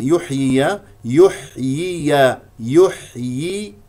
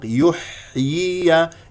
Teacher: الحاء مهموسه ساكنه يجري فيها الصوت وا النفس وهي من وسط الحلق يحيي ياء مكسوره ثم ياء